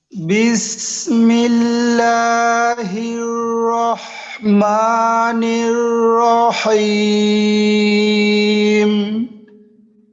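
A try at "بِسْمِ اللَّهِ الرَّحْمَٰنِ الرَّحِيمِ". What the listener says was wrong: তিনটা জায়গা বিস, এই বায়ের জেরের উচ্চারণটা একটু কিন্তু লম্বা হয়ে গেল, অর্থাৎ বিস, বিস না বলে বিস, বাটা তাড়াতাড়ি শেষ করে সিনের মাঝে আপনি একটু সময় দেন, একটা বিষয়। আর একটা হলো র, এই যে একটা র, এই যে একটা র, হির রহমানির রহিম।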